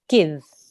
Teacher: kasra so how would you do that give give give good you don't need to elongate it don't need to make it longer you need to join in a nice short sound